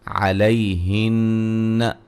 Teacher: نون مشدد پہ غنہ ضروری ہے